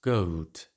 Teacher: the closing diphthong in goat ends with a glide w, goat.